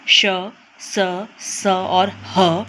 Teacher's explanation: उष्म व्यंजन वे व्यंजन है जिनका उच्चारण करते हुए वायु घर्षण या रगड़ कर निकलती है। जैसे आप जानते हैं श, स, स और ह जब हम इनका उच्चारण करते हैं तो एक तो मुंह से गर्म हवा निकलती है और घर्षण करते हुए निकलती है।